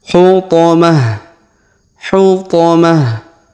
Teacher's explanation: tak marbutoh yang di ujung kita sukunkan ya, kita rubah menjadi ha. Hutamah. Hutamah.